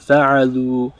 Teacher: Notice how we added a dhamma onto the end, onto the last root letter, and then we added a waw sakina. So we elongate the oo sound